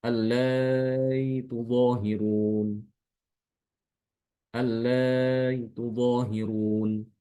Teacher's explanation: dengan mentasilkan hamzah dan dibaca antara hamzah dengan huruf mat